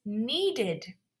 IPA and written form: ˈniːdɪd (needed)